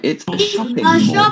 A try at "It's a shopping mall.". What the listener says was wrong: You don't need to go shopping with two P's. Just one is fine. Shopping mall.